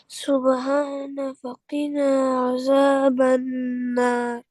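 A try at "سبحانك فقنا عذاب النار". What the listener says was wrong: آپ کی مجھے ک کی آواز نہیں آئی۔ سبحانک،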